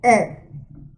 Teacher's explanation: position of tongue, this is also in front area. Height of tongue, open. When we say A, A, E, A, E, A, open.